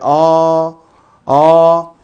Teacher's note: 소리 한번 내볼까요 하면은 혀가 위로 올라감으로 고모 반면에 아 아 혀가 아래로 떨어지므로 저모음이 되죠